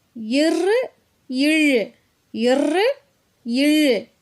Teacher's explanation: இந்த ரெண்டு எழுத்துகளும் மேல்வாயை நாக்கினுடைய நுனி வருடுவதால் பிறக்குது